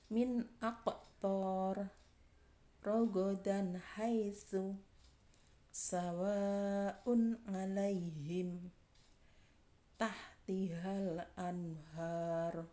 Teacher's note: Jadi nun sukun atau tanwin dibaca jelas apabila bertemu dengan salah satu hurufnya idhar yang ada 6 itu. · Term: hukum bacaan idhar